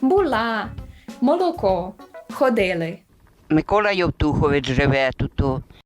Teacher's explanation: у частині полтавських говірок поширений особливий звук л ясенний або альвеолярний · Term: альвеолярне ли